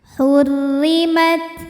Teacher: Hurrimat, hurri, ro-nya ini dihukumi dengan ro yang dibaca secara tarqiq, sebab ro-nya berbaris di bawah yaitu baris kasrah. Maka cara bacanya tipis, pangkal lidah tidak perlu naik, datar aja.